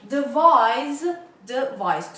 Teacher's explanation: attention, the sound of S here is Z. Devise, devise, 2 syllables and the stress is on the second syllable.